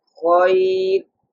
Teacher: if there's a ya sakin before the ra sakin, ra should pronounce in a thin tone